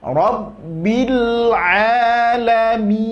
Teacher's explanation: Itu ke huruf e perginya, salah, ya, kurang sempurna. Kemudian nun juga di akhir memiliki sifat tawasud. Jadi jangan diputus langsung, ngalirkan sedikit.